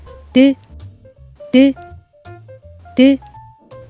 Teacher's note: 혀끝을 살짝 들어 윈니 뒤에 붙이고 준비해요. 혀를 구부러진 모양으로 만들었다가 바람이 살짝 튀어나오도록 혀끝을 탁 하고 떨어뜨리면서 소리 내어요.